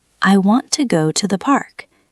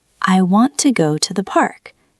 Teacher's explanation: Notice how want, go, and park are stronger. The other words are softer and faster.